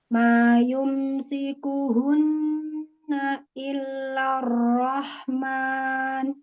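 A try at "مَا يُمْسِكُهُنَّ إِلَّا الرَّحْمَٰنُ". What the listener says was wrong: Satu nafas jangan seperti na ada jeda. Ma yumsikuhunna illarrahman. Satu tarikan nafas.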